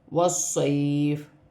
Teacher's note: یہاں پر یا ساکن سے پہلے زبر ہے تو یہاں پر بھی یا لین بنتا ہے، اسے کھینچتے نہیں ہیں